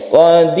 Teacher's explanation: tipis, tipiskan ro-nya, itu disebut dengan tarqiq